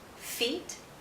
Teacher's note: consonant sound after a vowel sound the vowel sound becomes longer the vowel sound is shorter when it's followed by a voiceless consonant